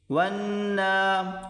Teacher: نون کو کھینچ کر پڑھیں گے ایک الف کی مقدار · واو کو نون کے ساتھ ملا کر سختی کے ساتھ پڑھیں گے کیونکہ نون کے اوپر تشدید ہے